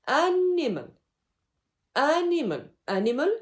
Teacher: The dactylic rhythm is the combination of 3 syllables. The first one is a stressed syllable plus 2 unstressed syllables.